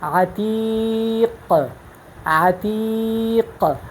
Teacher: اب یہ قاف جو ہے ساکن ہے تو اس میں صفت قلقلہ موجود ہے